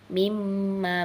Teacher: mimma dileburkan, nunnya ini seperti hilang begitu